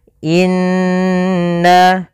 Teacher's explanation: kita tahan n-nya sepanjang 2 harokat sampai 3 harokat. Ya, tapi 2 lebih sedikit saja. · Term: gunnah